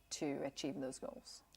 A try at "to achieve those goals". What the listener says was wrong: To achieve those goals. So don't drop all the way at the end.